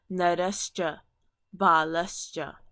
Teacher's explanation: when this visarg is being followed by a cha, then that visarg is going to turn into the sibilant for that column.